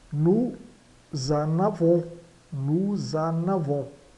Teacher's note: uma ligação é obrigatória entre on e este verbo. Então g é j. · fazemos a ligação com o Z